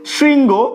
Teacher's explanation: তালব্য স এর সাথে যদি রিকার যুক্ত থাকে তাহলে তালব্য সটা দন্ত স এর মতো উচ্চারিত হয়